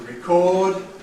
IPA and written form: rɪˈkɔːd (record)